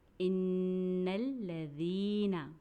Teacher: ان الذین، ذال کو ہم نے نرمی سے ادا کیا، یا ساکن کو ہم نے ایک الف کے برابر پڑھا کیونکہ یہ یا مدہ ہے